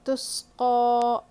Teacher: قاف پہ کھڑا زبر ہے، کھینچنا ہے ایک الف کے برابر، تس قو. اور یہاں پہ دیکھیے سین پہ قلقلہ بالکل نہیں ہونا ہے، سین میں بالکل سیٹی کی آواز آئے گی، ٹھیک ہے، سین میں بالکل سیٹی کی آواز آئے گی اور اس کو نہیں قلقلہ نہیں کرنا ہے. · سین میں بالکل سیٹی کی آواز آئے گی اور اس کو نہیں قلقلہ نہیں کرنا ہے. جی تسقا.